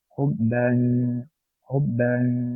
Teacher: jangan ditempelkan lidah kita pada makhraj jim atau pada makhraj nun, namun disamar-samarkan, lidah kita ditarik ke bawah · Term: ikhfa